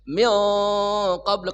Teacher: nunnya dibaca samar dan dengung disertai dengan tebal karena bertemu huruf qaf. Qaf itu huruf isti'la. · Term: dengung tebal